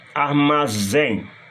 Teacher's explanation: Armazém, a sílaba forte é a última. Oxítona terminada em em.